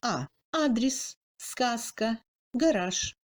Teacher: En russe, la lettre A occupe la 3e place dans le classement des lettres selon leur fréquence d'emploi. Accentué, le A russe correspond au A ouvert français et se prononce comme A dans le mot adresse